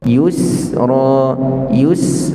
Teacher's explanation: juga beri tempoh sebelum nak sebut Ra jangan Yusra Yus Yus beri tempoh sekejap pada Sin tanpa kita angkat lidah kita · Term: sifat rakhawah